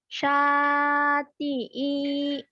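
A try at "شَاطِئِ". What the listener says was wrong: Pendek. Yang panjang sa doang.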